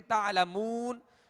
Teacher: اور واو مدہ کو جب ہم دراز کریں گے تو دونوں ہونٹوں کو کامل گول کریں گے ورنہ مجھول ہو جائے گا.